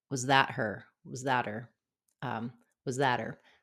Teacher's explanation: So we drop the H, the was and that linked together, and the final T of that was that her, because we don't have an H or consonant sound on her, it can become a flap.